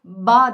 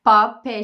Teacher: çalışıyorum p sesi dışarıdan gözlenebilen ve taklit edilebilen kolay bir sestir p sesini çıkartırken dudaklarımız gergin bir yapı alır ve nefes çıkışı olur